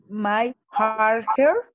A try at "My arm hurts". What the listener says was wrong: Oh, here it's my arm hurts. Yeah, I heard my heart hurts. Como mi corazón, my heart hurts. Es lo que escuché. My arm hurts. My arm hurts.